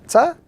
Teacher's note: is pronounced when the tip of the tongue touches the roots of the two front teeth. So when the tongue touches the roots of the two front teeth, from that particular spot, a person is able to pronounce this particular letter, Ta, of the Arabic language.